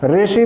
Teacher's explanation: ऋषि में र का उच्चारण आप करते हैं, ऋ का उच्चारण नहीं करते ऋषि, क्योंकि थोड़ा सा जिह्वा को ऊपर ले जाकर उच्चारण करने में कठिनाई होती है।